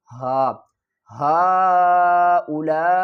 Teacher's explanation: حل کے نیچے والے حصے سے آواز نکالیں گے اور آواز ہماری بھاری ادا ہوگی۔